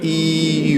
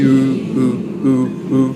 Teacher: Your lips are changing, your lips are becoming rounded and kind of pouting, but also your tongue is moving back